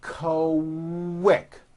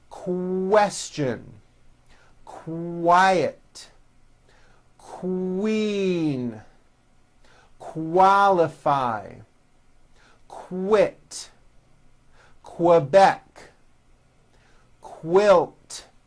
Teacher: Q sounds are made with the K sound and the W sound were put together